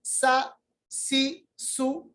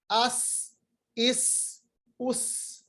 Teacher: बहुत तेज सीटी की तरह आवाज निकलेगी। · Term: सीन